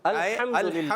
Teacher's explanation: अल्हम्दुलिल्लाह में हम जब अदा करेंगे लिल्लाह, इसको मोटा नहीं करना।